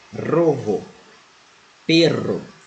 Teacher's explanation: O R vibrante múltipla, no caso, quando o R vem no início da palavra ou quando ela vem dobrada.